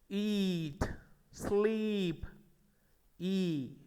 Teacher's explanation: Long E is coming in this word. We are pronouncing this sound in a closed manner. Front part of our tongue is becoming strong while you are pronouncing this vowel sound.